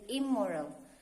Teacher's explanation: So in front of bilabial words, in becomes im. In the example of word immoral, the first is moral, we add in, so we say it immoral.